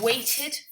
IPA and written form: ˈweɪtɪd (waited)